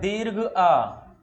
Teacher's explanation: इसमें हमारा मुख जो है एकदम खुल जाता है विवृत मतलब मुख जो अबाध गति से खुल जाता है कहीं कोई रुकावट नहीं रहती है इसके इसके इसको उच्चारण जब हम करते हैं इसका उसमें मुख जो है क्या होता है? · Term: विवृत स्वर